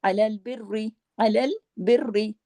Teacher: اب را کے ساتھ زیر ہے، باریک پڑھیں گے لیکن سختی سے پڑھیں گے تشدید کی وجہ سے